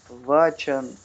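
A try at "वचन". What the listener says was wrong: Почему Вачан? Почему вы все время отбрасываете? Почему вы все время отбрасываете гласную в конце слова? Прям какое-то хиндизированное влияние.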